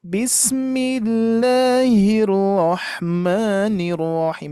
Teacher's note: Bismillahnya agak tinggi sedikit. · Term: variasi yang tingginya